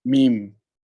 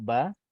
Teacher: antara mim dengan ba, tempat keluarnya dua bibir mulut